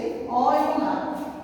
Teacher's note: অ উচ্চারিত হয় আমাদের কণ্ঠ থেকে, সে কারণে আমরা দেখতে পাচ্ছি উচ্চারণ স্থান এখানে রয়েছে অ এবং আ কণ্ঠ থেকে উচ্চারিত হয়